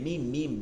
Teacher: দুই ঠোঁটের শুকনা জায়গা থেকে